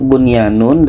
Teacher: Idgham Bighunnah tapi ini adalah izhar wajib kalau dikatakan izhar maka Nun jelas Ya jelas tidak ada dengung